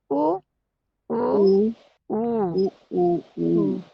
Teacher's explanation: तो इनको ओष्ठ्य बोलते हैं, होठों से बोले जाने वाले शब्द, वर्ण।